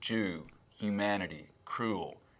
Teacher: Tennessee accents and Southern accents in general have something called goose fronting.